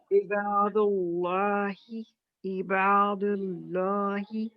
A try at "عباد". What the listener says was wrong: ہاں آئی کو مگر وہی جو ہے نا کہا تھا کہ اس کو پیچھے کھسکانا ہے اٹھانا نہیں ہے تو آپ کا تھوڑا سا ہیوی بھی ہو رہا تھا پھر با بھی ہیوی ہو رہا ہے.